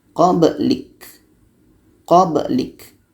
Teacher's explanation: Ka-nya berangin kalau mati.